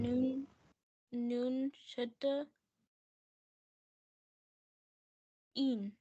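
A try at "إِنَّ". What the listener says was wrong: You have to do gunna in it. Noon shadda, I told you. When we see noon shadda or meme shadda, we always do gunna, right? In. Yes, gunna means nasal sound. You stretch it for 3 seconds. In.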